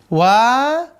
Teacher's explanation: Wa, kelompok pertama memajukan kedua bibir, memajukan kedua bibir, sifatnya tipis dan napas ditahan